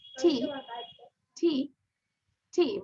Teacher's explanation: একটু টিটা উচ্চারণ করি, টি, বাতাস বের হয়